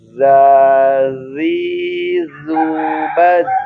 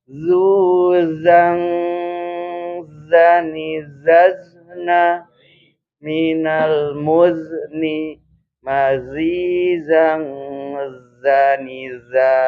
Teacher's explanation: Ujung lidah berhadapan dengan gigi seri depan bawah. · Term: Zai